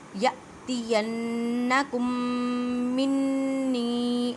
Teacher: میم ساکن کے بعد میم ہے، یہاں پہ ادغام شفوی کا قاعدہ کریں گے، مینس کہ غنہ کرنا ہے